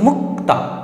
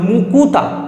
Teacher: উচ্চারণ হয়নি কিন্তু এখানে তুমি উচ্চারণ কর দেখছ যোগ হল মুক্তা তা ছিল এখন হল মুকুতা মাঝখানে একটা উ আসলো মাঝখানে একটা হ্রসংকার এসছে তো হ্রসটা হচ্ছে স্বরধ্বনি মাঝে এসছে তাই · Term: মধ্যসরাগম, মধ্য স্বরাগম